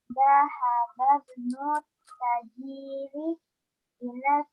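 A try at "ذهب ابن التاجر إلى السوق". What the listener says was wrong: Oh, taknya panjang. Tajiri.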